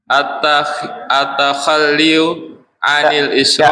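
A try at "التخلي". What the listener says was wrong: Enggak pakai iu ya, jadi at-takhalli gitu.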